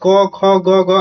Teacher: क ख ग आपका कंठ से होता है